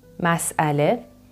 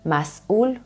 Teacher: Hamza which is kind of a glottal stop